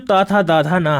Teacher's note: जो ऊपर के आपके दांत होंगे वहां पर जीभ स्पर्श कर रही होगी